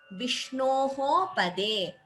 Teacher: visarga followed by pa, upadhamaniya.